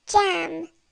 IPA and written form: dʒæm (jam)